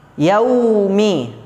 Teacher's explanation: waw sukun yang sebelumnya berharokat fathah, yakni disebut hukumnya harful lin atau mad layin, ya, dibaca mengalir saja, jangan dipanjangkan. Jangan dipanjangkan kecuali kalau terdapat di akhir kalimat yaum.